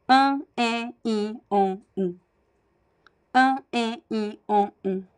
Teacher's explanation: They are completely nasal without the aid of any nasal consonant, right? So they don't need the letters M or N to sound nasal. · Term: nasal vowels